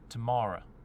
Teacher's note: the end of some words, like tomorrow, that final sound is going to turn to schwa, and you can cheat some of the other vowel sounds in it too.